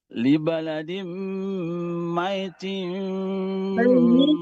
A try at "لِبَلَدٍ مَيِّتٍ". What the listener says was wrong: Ianya itu kan tasdid ya. Jadi jangan kedengaran kayak mati. Jangan mayyitim. Tapi mayyi-nya itu diperjelas. Karena mayyitim aja kayak ya mati jadinya bukan tasdid.